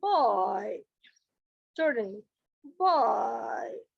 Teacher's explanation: lips are rounded in the beginning and అన్రౌండెడ్ at the end